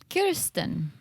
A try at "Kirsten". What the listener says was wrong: I think you're saying it now like Kirsten Dunst. I think it's Kirsten. Kier versus Kerr.